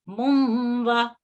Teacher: इसको हम इस तरह फिर पढ़ेंगे मुमवा, इसका आधा नून पढ़ा जाएगा, यानी इसका जो तनवीन का नून साकिन है वो आधा वाव मुशद्दद में दाखिल हो जाएगा। और यहाँ आधा नून पढ़ के वाव में दाखिल हो जाएगा, और इसको इदगाम नाकिस कहा जाता है। · ये नून साकिन या तनवीन की जो आवाज है ये नाक की जड़ से आती है, यानी गुन्ना की शक्ल में, और ये 2 हरकत के बराबर लंबी होती है